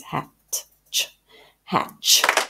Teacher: now we hear a ch, but there is actually a sneaky little t before the ch